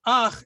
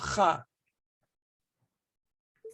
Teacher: and it has the vowel the patak vowel under it okay instead of pronouncing it as ha it's pronounced as ah